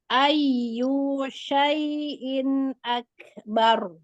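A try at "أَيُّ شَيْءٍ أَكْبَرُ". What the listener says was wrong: You-nya nggak boleh panjang ya.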